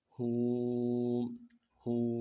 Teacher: واو مدہ 1 الف مقدار میں کھینچنا ہے، اور واو مدہ کو خوب ہونٹوں گول کرنا ہے۔ واو مدہ میں ہا واو پیش ہو، ہو، ہو۔